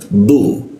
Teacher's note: huruf du itu lidahnya bertemu dengan graham